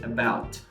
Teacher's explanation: this is a schwa sound that happens whenever it is not stressed